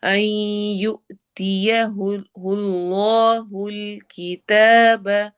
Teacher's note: یو حمزہ پہ جھٹکا ہوگا